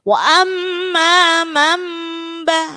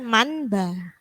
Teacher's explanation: Ya, yang pendapat kedua yang mingkem karena apa? Nunnya itu berganti dengan mim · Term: iklab